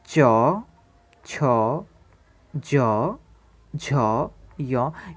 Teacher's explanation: ये सारी चीज़ें तालु से जो उच्चारित होता है तो इसीलिए हम इसे तालव्य वर्ण कहेंगे